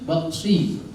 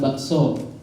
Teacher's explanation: Rahangnya tebal. Antara sin sama so itu bedanya cuma yang satu tipis, yang satu tebal